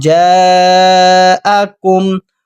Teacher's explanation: بڑی مد کو 3 سیکنڈ کھینچنا ہے